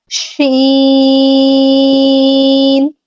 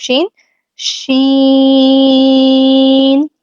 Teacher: شین کی ادائیگی میں زبان چپکے گی نہیں، لیکن اس کے قریب جائے گی، تھوڑا سا اس کے درمیان میں فاصلہ ہوگا.